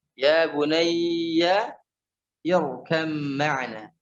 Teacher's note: Ba bertemu dengan mim. Ya, ba bertemu dengan mim. Nah, ini didengungkan dua harokat